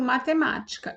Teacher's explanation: proparoxítona palavra em que a antepenúltima sílaba é a mais forte